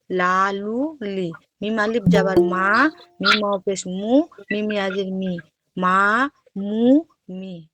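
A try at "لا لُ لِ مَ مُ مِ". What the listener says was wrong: সুন্দর হইছে।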